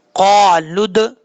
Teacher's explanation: अब जब लाम को दाल से कनेक्ट करेंगे तो लाम के बाद वाव है, अलिफ है, अलिफ है, तीनों हर्फ को छोड़ देंगे, वाव के ऊपर जज्म नहीं है इसलिए इसको नहीं पढ़ेंगे। क़ालुद, दाल में कलकला है